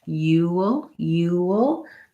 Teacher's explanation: Again, if it's stressed and tense, you'll. There we do have a little bit of a W sound because we're moving from a rounded shape to the dark L.